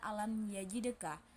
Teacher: Terdapat hukum tajwid izhar syafawi karena mim sukun bertemu ya fathah. Cara bacanya mim dibaca jelas di bibir tanpa dengung.